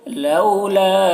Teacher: لولا لو میں واو لین ہے، اسے جلد پڑھنا ہے ، لا میں جو مد ہے مد منفصل ہے، اخرتنا خا